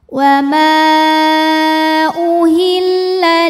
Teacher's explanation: maka mim dipanjangkan boleh 4 boleh 5 harokat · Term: mad jaiz munfasil